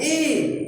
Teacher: जब हम ई कहते हैं तो हमारे जीभ का अगला भाग ऊपर से नीचे हो जाता है। ई देखिए नीचे हो रहा है ना, बड़ी ई, ऊपर हो गया फिर नीचे, बड़ी ई। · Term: अग्र स्वर